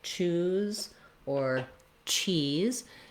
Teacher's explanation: if you can say the ch sound, that definitely has that burst of air